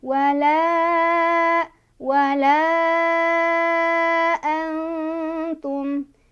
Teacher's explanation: Nggak terlalu eng, gitu. Jadi nun sukunnya memang dibaca samar. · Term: ikhfa Aqrob